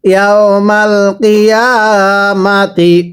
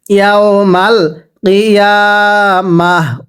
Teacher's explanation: ওয়াকফের সময় তাটাকে হা বানিয়ে পড়তে হবে